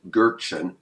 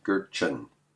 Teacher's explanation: the TJ comes out as a CH